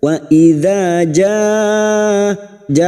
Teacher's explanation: Wa idza jaa fathah bertemu alif 2 harokat mad tabi'i. Wa idza ja bertemu mad dengan hamzah dalam satu kalimat mad wajib mutasil 5 harokat kita panjangkan